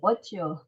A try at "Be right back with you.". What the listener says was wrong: 아니요, what가 아니라 제가 천천히 읽어볼게요. Be right back with you.